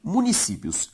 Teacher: A sílaba tônica de municípios, si, é a penúltima, ou seja, uma palavra paroxítona.